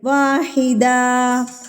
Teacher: 2 زبر پر جب آپ وقف کریں گے تو آپ اس کو ایک الف پڑھیں گے